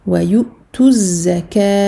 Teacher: je fais la liaison du ta dhamma au za shadda. Et ensuite, je fais donc mes 4 temps parce que je m'arrête.